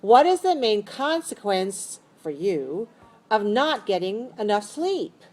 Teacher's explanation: Rise-falling intonation. So go up on the keyword and fall down.